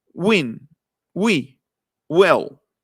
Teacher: Al mismo tiempo que cerramos poquitito, casi no se tocan los labios, y atrás el velo del paladar, como si hiciéramos una G, cerramos poquititito, pero en realidad no se encuentran, o sea, no se alcanzan a tocar. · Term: la W en inglés